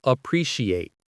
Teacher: The T in appreciate often sounds like a ch sound in American English